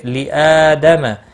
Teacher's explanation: تس سین ساکن کو ہلانا نہیں، جدو دو واو مدہ ہے 1 الف کے برابر کھینچ کر پڑھیں گے۔ لی آدم حمزہ کے اوپر کھڑی زبر ہے 1 الف کے برابر کھینچ کر پڑھیں گے